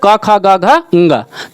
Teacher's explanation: ये आपका का वर्ग है तो कंठ से बोला जाएगा।